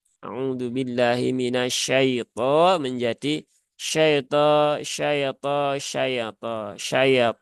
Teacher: seolah-olah ada harakat fathah yang nyempil di situ